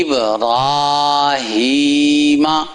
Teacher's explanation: را یہ کھڑی زبر ہے تو کھڑی زبر کے ساتھ اسے پڑھنا جائے لمبا کر کے